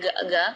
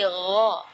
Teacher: Di ayat ini yang pertama di makhraj huruf ghain ya, ghairil maghdubi ya, perlu diperhatikan, bukan G, bukan huruf G ya, bukan ga, tapi gha. Jadi kalau ga itu dia makhrajnya dari lidah. Ya, tapi kalau huruf ghain itu dari bagian tenggorokan ya.